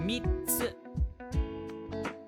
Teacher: This is a small tsu, so it's a glottal stop.